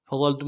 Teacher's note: ضا کو موٹا کرتے ہوئے لام کے ساتھ ملانا ہے، لام ساکن غنہ آنی ہوگا، تا کو میم ساکن کے ساتھ ملانا ہے، غنہ کریں گے۔